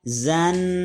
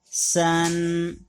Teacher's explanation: زبان کی نوک نیچے والے دانتوں کے ساتھ لگاتے ہیں تو یہ دونوں حرف ادا ہوتے ہیں. ز ذرا سختی سے ادا ہوتا ہے اور س سیٹی کے ساتھ ادا ہوتا ہے